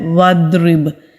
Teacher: ضاد کو جب ہم ادا کرتے ہیں پیچھے سے ہماری زبان اوپر کو اٹھتی ہے، دائیں سائیڈ کی نیچے والی داڑوں پر مضبوطی کے ساتھ لگائیں گے، یا پھر بائیں سائیڈ کی داڑوں کو جو نیچے والی داڑیں ہیں ان کے ساتھ مضبوطی سے لگائیں گے تو پھر ضاد منہ بھر کر ادا کریں گے۔